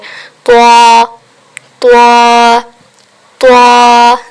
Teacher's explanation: त्वा, ज़बान की नोक और ऊपर दांतों की जड़ से अदा किया जाता है। त्वा को मोटा पढ़ा जाता है